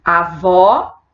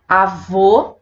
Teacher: Avó, tônica aberta, avô, tônica fechada